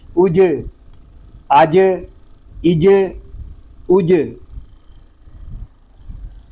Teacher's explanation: جیم یہ حروف کلکلہ میں سے ہے، اس میں کلکلا خوب ظاہر کریں گے. اس کو آج یا آج یا آج اس طرح نہیں پڑھیں گے بلکہ ساکن کلکلا کریں گے. · جیم کو جب ادا کریں گے تو اس کی آواز منہ میں پھیل جائے گی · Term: حروف شجریہ